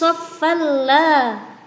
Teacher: terdapat bacaan idgham bila gunnah, sebab ada nun sukun bertemu dengan huruf lam